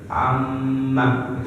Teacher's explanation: Ketika mim mati bertemu dengan mim, hukum bacanya adalah idgham mimi. Cara bacanya ditahan selama 2 harokat, sebagaimana penahanan dari mim yang bertasdid.